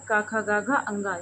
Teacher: तो ये वर्ण जो हैं ये बोले जाते हैं कंठ से। इन्हें कंठ वर्ण कहते हैं।